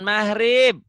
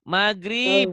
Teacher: maghrib, bukan mahrib. Kalau orang Jawa mahrib, kalau orang Sunda maghrib, maghrib. G-nya mati.